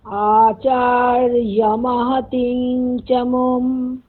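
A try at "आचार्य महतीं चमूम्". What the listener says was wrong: চমুম, ওখানে ময় দীর্ঘ বলুন, তারপর মকারটা বলবেন, চমুম, বলুন আবার।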